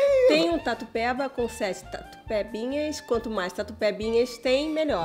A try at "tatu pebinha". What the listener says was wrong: Você tá trocando P pelo B. É tatu pebinha, não tatu bebinha. Não, tatu pebinha. Você tá falando bepinha.